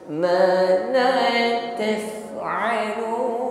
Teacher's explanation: Huruf fa sukun nampak sifat hembusnya. Hembuskan angin ketika mengucapkannya.